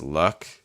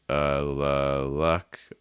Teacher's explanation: For that L, I'm using a dark L, so the tip of my tongue is down